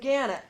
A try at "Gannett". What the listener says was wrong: I moved across the hall to Gannett. Which, actually, it's Gannett, by the way. The emphasis on the net.